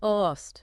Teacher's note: You really need to articulate that T at the end so it doesn't sound like loss.